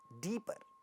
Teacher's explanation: first syllable is stressed, at the end of the syllable there is a pa sound, but this doesn't get aspirated. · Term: unaspirated